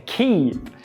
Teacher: Veja que esse keep é com I longo, né? Não é keep, é keep.